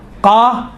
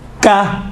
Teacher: زبان کی جڑ اگر نرم والی جگہ، اوپر والی نرم والی جگہ سے جب ٹچ ہوتی ہیں تو قاف نکلتا ہے، سخت والی جگہ سے ٹچ ہوتی ہیں زبان کی جڑ تو کاف نکلتا ہے